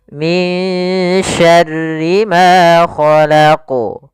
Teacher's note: Khalaqu tetap memantul dan dia awdah, lebih jelas dibandingkan yang dia di tengah. Karena di sini juga termasuk qalqalatul kubra.